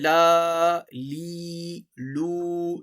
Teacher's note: لا اوپر کی طرف، لی نیچے کی طرف، اور لو کو تھوڑا سا گول کر کے